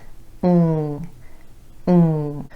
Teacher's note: a voiced sound meeting that the vocal cords are involved and vibrating and you can feel that vibration here in your throat if